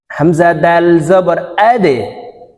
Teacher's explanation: দাল কলকলার হরফ ধাক্কা দিয়ে উচ্চারণ করতে হবে